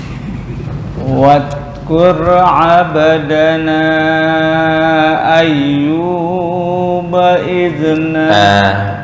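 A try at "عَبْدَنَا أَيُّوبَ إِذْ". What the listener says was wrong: Hanya 2 harokat atau wasol. Jangan lebih. Bukan ayyuba itu kepanjangan. Langsung abdana ayyuba idnada rabbahu anni.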